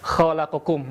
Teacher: Maka sempurnakan ketika kita melafalkan huruf kha ada sedikit getaran lembut ya. Jadi getarannya lembut, tidak keras.